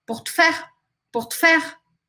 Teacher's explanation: corta praticamente esse E aqui na pronúncia. Pour te faire, pour te faire.